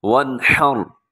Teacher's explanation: فَصَلِّ لِرَبِّكَ وَانْحَرْ، وَانْحَرْ، نون ساکن پہ اظہار ہو رہا ہے، یعنی یہاں پہ اپنے غنہ نہیں کرنا، آواز کو ناک میں نہیں زیادہ لے جانا